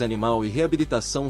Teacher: as palavras animal e Reabilitação são oxítonas ou seja possuem acento tônico na última sílaba